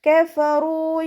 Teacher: മേലെ മുൻപല്ലിൻ്റെ അറ്റം, താഴെ ചുണ്ടിൻ്റെ ഉൾവശത്ത് വെറ്റായ ഭാഗത്ത്, നനഞ്ഞ ഭാഗത്ത് വെച്ചിട്ട് ഉച്ചരിക്കുക